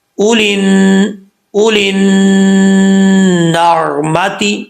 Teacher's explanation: الف پھر لام ہے، یہ تینوں حرف نہیں پڑھے جائیں گے، لام کو ڈائریکٹ ہم نون سے ملائیں گے